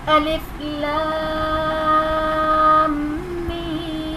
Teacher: الف لام میم، الف لام اور میم میں لام الف مدہ کے بعد میم ساکن ہے یعنی سکون اصلی کی علامت ہے جزم، یہاں پر مد لازم کا قاعدہ بنے گا، اور میم ساکن کے بعد دوسری میم آ رہی ہے تو یہاں پر ادغام شفوی کا قاعدہ بنے گا، یعنی غنہ کر کے پڑھیں گے، اور میم میں یا ساکن سے پہلے زیر ہے، یا مدہ کا قاعدہ ہے، اور اس کے بعد سکون اصلی یعنی جزم ہے تو یہاں پر مد لازم کا قاعدہ بنے گا۔